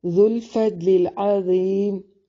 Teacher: दौद को मोटा अदा करेंगे, लाम को बारीक